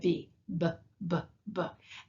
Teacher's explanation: say a b and you'll notice that your voice vibrates a little bit · you'll notice that your voice vibrates a little bit. So there are all of these different pairs that are made in the exact same way in your mouth, except that one of them you vibrate your voice box, and the other one you don't.